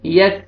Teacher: یک کاف کا لائٹ سے ساؤنڈ آئے گا، قلقلہ نہیں